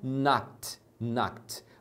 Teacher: Quando é no passado, você pronuncia knocked, knocked. Você coloca ED, mas você pronuncia esse final com um som de T.